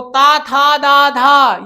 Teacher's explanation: ता था दा धा ये दंत से उच्चारित होने वाला होता है